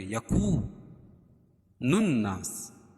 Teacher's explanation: واو ساکن سے پہلے پیش ہو تو واو مدہ، اس کو ایک الف کے برابر کھینچ کے پڑھیں گے